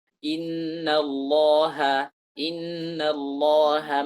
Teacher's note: kata Allah itu harus ditipiskan